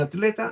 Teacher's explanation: Significa que el grupo TL, la T con la L, se pronuncian en Chile en la misma sílaba.